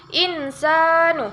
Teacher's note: Hukumnya adalah al-qamariyah karena ada huruf alif lam bertemu dengan huruf hamzah, cara membacanya harus terang dan jelas.